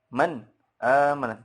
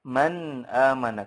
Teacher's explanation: untuk nun dan mim yang sukun dalam keadaan izhar itu ada ekornya sedikit